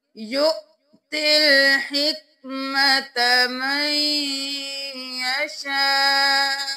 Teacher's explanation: دیکھ لیجئے، یا پیش حمزہ یو، واو کو نہیں پڑھیں گے، حمزہ کے اوپر جزم ہے تو ہم جھٹکا دے کر پڑھیں گے